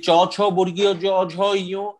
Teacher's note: এটার উচ্চারণ স্থান হচ্ছে তালু। হ্যাঁ, তালু থেকে উচ্চারিত হয়ে থাকে।